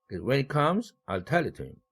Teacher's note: 피치도 comes와 tell이 가장 높아지죠. 액센트를 받느라고. · 그러므로 각각의 의사단락 내에서 마지막 내용어에는 1강세를 배정하라. 그렇게 되면 when he comes라는 의사단락에서는 comes라는 마지막 내용어가 1강세를 받겠고 I'll tell it to him에서는 tell이라는 내용어 뒤에는 전부 다 it도 대명사, to도 전치사, him도 대명사니까 마지막 내용어는 tell밖에 없죠.